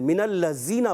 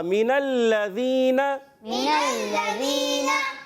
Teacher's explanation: लाम मुशद्दद होने की वजह से ज़रा रुक कर अदा करेंगे। ज़ाल की अदायगी क्लियर रखने, ज़ा से नहीं बदलना चाहिए